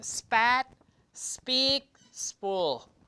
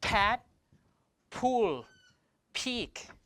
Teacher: So when we pronounce these P's, spat, spool, speak, there's no aspiration. Spat, speak, spool, like that, no aspiration.